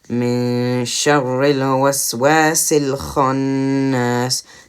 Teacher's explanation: there's also a med here after the wow, which would stretch it just a tiny bit up to 2 haraka